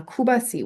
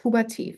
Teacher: t from the loanword is occurring in the final position of a trisyllabic word, we still retain the t. · we get lenition uh on the second syllable of a trisyllabic word, but not the third syllable of a trisyllabic word. Um and we also don't get it in initial position.